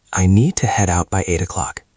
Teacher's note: Focus on the t sound in out connecting to the next word.